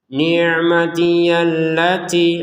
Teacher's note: allati kita panjangin dua harakat karena belum gabung sama hamzah ya